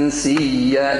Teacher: إخفاء النون مع الغنة